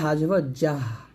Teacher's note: জিহ্বার মধ্যখানে উপতাল সঙ্গে লাগাবেন দাঁত লাগাবেন না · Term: জিম